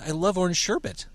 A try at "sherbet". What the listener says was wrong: There's no R in there.